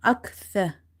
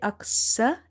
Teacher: Sa is from the tip of the tongue when it touches the inner edges of your top to front teeth.